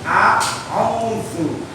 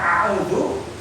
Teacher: Ringan, sifatnya ringan, tidak tebal, tidak ditekan, tapi ringan.